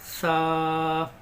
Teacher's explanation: سا جو ہے زبان کی نوک کو ہم اوپر کے دانتوں پر لگائیں گے تو ہمارا سا نکل جائے گا۔